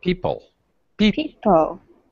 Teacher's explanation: The first syllable, P, is higher pitch. It's stretch.